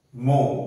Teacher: অ, এই অটা হচ্ছে ইলংগেটেড অ সাউন্ড, অ। মোর যেটা, এটার উচ্চারণ ও হয় না, অ, অ হয় এবং ইলংগেটেড অ হয়